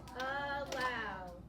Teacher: We start with that schwa because the A is by itself in its syllable.